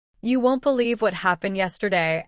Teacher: the sentence rises a little at the end like a hook pulling the listener closer